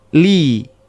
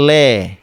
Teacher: membaca harakat kasrah yang bunyi vokal harusnya i tapi dibaca e